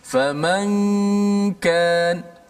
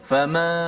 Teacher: Gunnah itu dia lebih mendominasi, banyak berlaku di hidung.